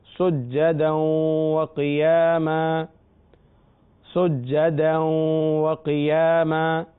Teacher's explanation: سجدن کی تنوین کے بعد واو آ رہا ہے، لہذا واو میں ادغام ہو رہا ہے. سجدا وقیاما، قاف کے نیچے زیر ہے مگر حروف مستعلیہ ہے لہذا پر پڑھیں گے.